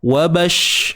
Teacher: Ada sifat tafashi iaitu berhemburan. Berhemburan udara bila kita nak sebut huruf shin ni.